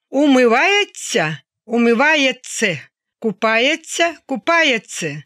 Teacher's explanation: Дієслова, які закінчуються в українській мові на «ця», в говорі транскрипція буде «це».